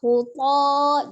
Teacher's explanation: Jadi tetap dibuka huto. Jadi to itu bukan dibentuk dengan memonyongkan bibir, tetap dibuka mulutnya. Hanya dia mengangkat pangkal lidah ya, pangkal lidahnya naik